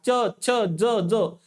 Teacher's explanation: आणि त्यासोबतच आता च, छ, ज, ज चा उच्चार करत असताना काय होते? तुमचा जो काही जिभेचा शेंडा आहे की नाही, तर तुमच्या दाताच्या वरच्या बाजूला लागते बघा. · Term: तालव्य, तालव्य वर्णाच्या